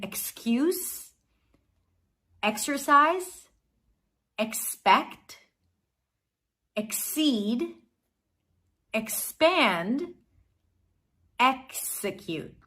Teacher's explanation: The letter X can be pronounced with two consonants, a sequence of consonants, k and s, k as in cake and s as in sun, x as in excuse, exercise, expect, exceed, expand, execute.